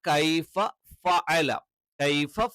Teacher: രണ്ട് വരി മുൻപല്ലുകൾ താഴെ ചുണ്ടിൽ ചേർത്ത് വെച്ചിട്ടാണ് ഫ എന്നുള്ള ഉച്ചാരണം വരുന്നത്